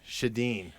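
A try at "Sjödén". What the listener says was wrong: And actually over there they say Sjoden, or so I'm told. But the SJ is more of a like sh. Like a H, like a Huden. Huden, would my mom would say.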